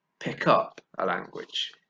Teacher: there's a link the two sounds are linked between those two words right and stress goes on the second syllable